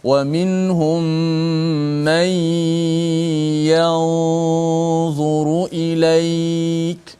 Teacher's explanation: Disembunyikan bukan dalam dha, dia tak masuk. Dia hanya disembunyikan di sisi huruf dha. Sebab tu gunnah kita bunyi seakan-akan tebal sedikit. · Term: ikhfa